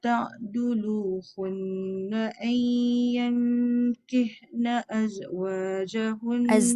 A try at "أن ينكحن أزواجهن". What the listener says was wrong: Tu jangan bunyikan z. Ayyankihna azwajahun. Yankih.